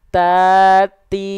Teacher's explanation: Ujung lidah kita sentuhkan ke pangkal gigi sari atas kita. Ya, ke gusi tempat tumbuhnya gigi sari atas kita, teman-teman sahabat-sahabatku sekalian. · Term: huruf ta